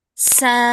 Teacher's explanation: Sin anginnya dia hanya keluar dari celah antara gigi seri atas dan gigi seri bawah. Jadi anginnya enggak terlalu banyak. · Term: huruf sin